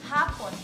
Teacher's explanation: Binibigkas ito ng malumanay na may diin sa unang pantig.